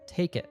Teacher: first we have a stop T at the end of it, and it links to take.